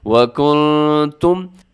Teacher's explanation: یہاں نون ساکن کے بعد تا ہے تو اپنے اخفا کرنا ہے، آواز کو ناک میں چھپانا ہے